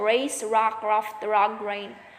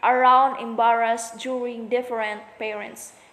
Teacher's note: The alveolar semi-vowel R. Initial race, rock, raft, rug, rain.